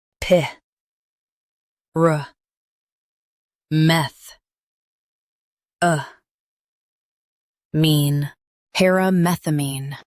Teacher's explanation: Emphasize meth and soften mean.